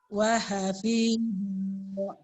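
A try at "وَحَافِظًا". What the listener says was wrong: Zo-nya panjang. Ada alif juga. Wahafiza. Fi sama zo panjang ya.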